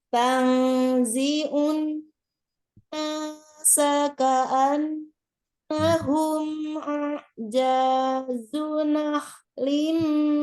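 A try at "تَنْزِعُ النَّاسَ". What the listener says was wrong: Ulang. Di situ ada nun tasdid ya. Sempurnakan gunnahnya paling sempurna. Akmal matakun. Unnasa. Gunnahkan dulu nun tasdidnya.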